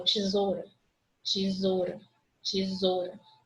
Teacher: O som do O prevalece sobre o U, não prevalece? Tesoura. Meu ditongo, O.